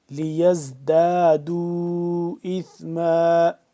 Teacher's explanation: زا کو سختی سے پڑھیں گے